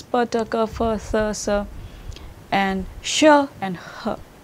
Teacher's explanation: during the production of these voiceless consonants the glotus is open spread and air passes through the glotus without any vibration